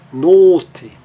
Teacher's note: Agora, um som fechado e longo, olhem a palavra note. Note, uma consoante só seguindo o, faz com que ele fique o som longo, está ali na transcrição fonética, os dois pontinhos estão lá, note, longo e fechado.